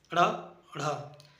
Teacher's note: उत्क्षिप्त या द्विगुण व्यंजन, इनके उच्चारण में जिह्वा मूल भाग को स्पर्श करके तुरंत नीचे गिर जाती है।